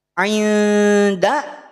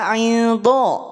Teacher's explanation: Huruf dal jangan sampai tertarik menjadi tebal.